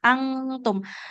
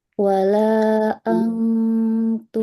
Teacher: Kalau ang kan dia ujung lidahnya tidak nempel ke pangkal gigi.